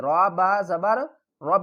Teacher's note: را کو با کے ساتھ ملائیں گے، با کے اوپر سختی کریں گے